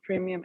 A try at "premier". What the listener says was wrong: Premier. You're saying premium, it's premier.